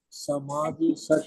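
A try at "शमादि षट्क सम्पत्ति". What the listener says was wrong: Shamadhi, Okay, so it's a Sh. If S is by itself, it is Sa. But if S has got a stroke on top, then it becomes Sh. So Shama, Shatka, Sampati.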